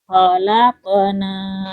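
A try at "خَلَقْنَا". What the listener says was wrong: Jangan khalaqna. Khalaqna itu qafnya tipis. Khalaqna. Enggak, tapi khalaqona.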